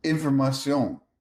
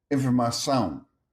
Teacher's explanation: Spanish keeps the clear CION, sion. Portuguese compresses it into a nasal sound, but visually the transformation is extremely regular.